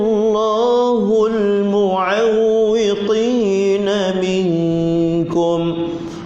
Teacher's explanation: Hul, huruf ha kaki paling bawah, hu terus masuk lam infitah. Hul, buka, jangan terus moncong.